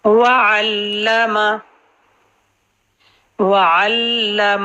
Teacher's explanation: واو کی لیے زبر کلیئر کریں گے اور لپ سرکل کریں گے۔ وعلم، وعلم، اور میم کی حرکت سنگر رہے گی، علما نہیں کرنا۔